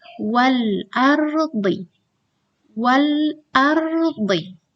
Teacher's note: Pada alif lam qamariyah, lafal lamnya jelas dibaca.